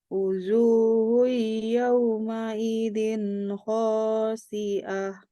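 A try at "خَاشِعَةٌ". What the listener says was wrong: Syinya tetap menggunakan yang tebal. Khasyi'ah.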